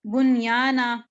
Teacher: نون ساکن کے بعد یا آیا لیکن ہم نے یہاں پر ادغام نہیں کیا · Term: اظہار مطلق